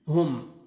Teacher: میم ساکن کا اظہار ہے، جلدی پڑھیں گے۔ وما هم، ہا کو اپنے مخرج سے ادا کریں گے، ہم، ٹھیک ہے، ہم نہیں، ہا میں مکس نہیں ہونا چاہیے ساؤنڈ۔